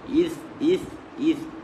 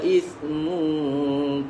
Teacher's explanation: Pastikan bezanya huruf sin dan huruf tha adalah keluarnya lidah sedikit pada huruf tha.